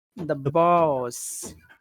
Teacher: The is short and boss is pretty long.